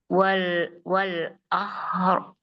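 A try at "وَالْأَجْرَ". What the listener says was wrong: Wal, hurufnya diperhatikan. Wal ajra itu jim.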